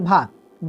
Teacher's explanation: जो है स्पर्श घोष महाप्राण और ओष्ठ्य व्यंजन है